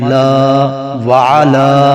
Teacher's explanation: وعلا کے اوپر مد ہے، اسے 4 الف کے برابر کھینچا جائے گا